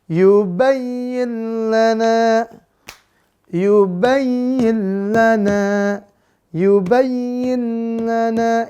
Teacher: huruf lam di mana makhrajnya? Ujung lidah, langit-langit depan. Tekannya di situ. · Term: idgham bila gunnah